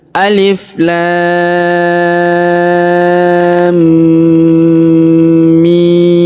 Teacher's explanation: ini tandanya enam harakat dipanjangkan enam harakat Alif Lam Mim Kemudian pada huruf mim terdapat tanda tasdid nah ini dibaca gunah atau dibaca dengung dengungnya kita panjangkan du sampai t harakat Alif Lam Mim Jadi · kita tahan dan kita tekan dengan dengung Alif Lam Mim kemudian huruf mimnya kita panjangkan setelah kita tahan